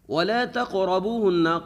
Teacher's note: ہے پیچھے پیش ہے تو واو کو بھی لمبا کریں گے، ہن یہاں پر نون مشدد ہے، نون مشدد کے اوپر غنہ ہوگا